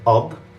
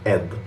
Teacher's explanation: actually flip the alif with an a sound into an e sound. So instead of ad, you're going to start with ed.